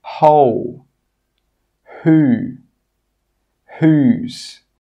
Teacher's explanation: In all of these words, we're pronouncing the H sound, but we're not pronouncing the W sound